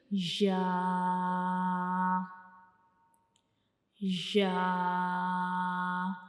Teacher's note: हमारी ज़बान का दरमियान वाला हिस्सा ऊपर की तरफ उठेगा, लेकिन ऊपर का जो मुंह का ऊपर वाला हिस्सा है उसको बिल्कुल टच नहीं करेगा, ऊपर की तरफ जाएगा लेकिन उसको बिल्कुल टच नहीं करेगा, यानी ऊपर वाले हिस्से से जा नहीं मिलेगा। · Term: या का मखरिज